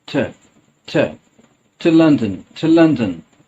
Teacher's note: So what's happening as I'm pronouncing that to as t, t. I'm using the schwa sound instead of to. I'm saying t, t. Just keep the tongue in the middle of the mouth. Relax your mouth.